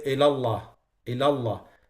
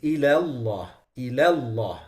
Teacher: Yani the ila is lowered and Allah is elevated.